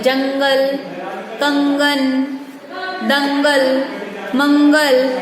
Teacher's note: जब भी अनुस्वार का उच्चारण होता है तो वो किससे होता है? नाक से होता है। तो यहाँ पे हम लिख लेंगे इसका उच्चारण नाक से होता है।